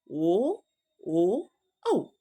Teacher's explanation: ಕಂಠ ಮತ್ತು ತುಟಿಗಳ ಸಹಾಯದಿಂದ ಜನಿಸುವ ವರ್ಣಗಳು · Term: ಕಂಠೋಷ್ಟ